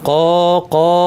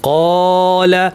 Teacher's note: কিন্তু এর বিপরীতে এখানে কলা এটা ভারী বলি, হ্যাঁ ক ক এই আওয়াজটা কি, এই আওয়াজটা ভারী, কলা অর্থাৎ আওয়াজটাকে উপর দিকে ঠেলে দিলাম, এই জন্য আলিফটাও ভারী হবে। কফ যেহেতু ভারী হরফ তার সাথে আলিফটাও ভারী হবে।